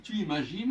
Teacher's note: Le S ne compte pas. Quand je dis tu imagines, au niveau de la prononciation, c'est comme s'il n'y avait pas de S.